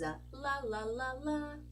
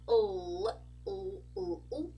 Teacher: we got the light l sound which is a la la la and we got the dark l sound which is an o o